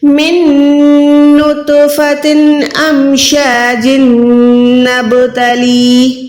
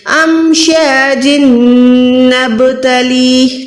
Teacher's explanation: جب ہم نہیں رکیں گے تو جیم کے نیچے جو 2 زیر ہے اس کو ہم نے نون کے ساتھ ملانا ہے، یہاں پر ہم نے ادغام کرنا ہے گننے والا